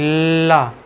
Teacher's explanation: जब ल बोलेंगे तो ला बोलने पर आपकी जीभ का दाएं तरफ और बाई तरफ से थोड़ी सी हवा रिलीज होगी। हवा आएगी बाहर। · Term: पार्श्विक व्यंजन